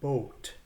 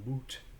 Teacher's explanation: With the shift, if you see a double O like in boot, the word boot would be pronounced in Middle English with an O sound, long O sound, as in boat. So the word boot in Middle English is pronounced boat rather than boot.